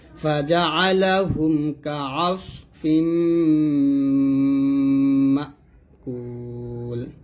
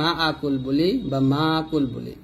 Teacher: মা আ হবে না মা ধাক্কা দিয়ে বলবেন